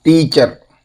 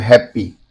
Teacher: Two syllable noun, teacher, and the adjective happy often stress the first.